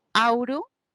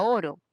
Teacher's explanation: esas dos vocales se convirtió a uno solo. Ese proceso se llama monoptongación.